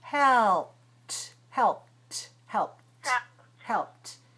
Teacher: Helped. That means you have to use your tongue for the L, and your lips for the P, and then your tongue again for the T. So all of that has to come one by one, and then smoothly, helped, helped, helped, helped.